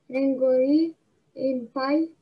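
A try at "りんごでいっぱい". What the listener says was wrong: Не и, а де.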